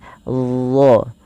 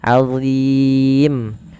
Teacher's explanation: Adzim, dho tidak dibaca dengan ziim tapi Aziim, tebal huruf dho nya pangkal pangkal lidah kita terangkat, dho. Ujung lidahnya sebagaimana dzal, Aziim.